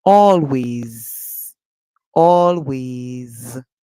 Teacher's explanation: the S at the end makes a sound like Z. So remember, it's not a Z, but it's an S.